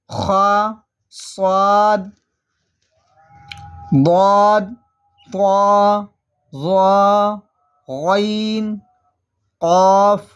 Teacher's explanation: ان 29 حروف میں 7 حروف ایسے ہیں جو ہر حالت میں پر یعنی موٹے پڑھے جاتے ہیں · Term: حروف متعالیہ